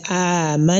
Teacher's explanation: you are going to clearly sound the nasalization of that particular nun. So that is why I say amanna. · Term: idharun bigunna